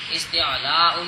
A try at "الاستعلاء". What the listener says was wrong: استعلاء نہیں استعلاء الاستعلاء الف لام بھی نال جوڑنا.